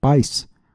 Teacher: Já pais tem uma só sílaba, pois o i forma um ditongo com o a.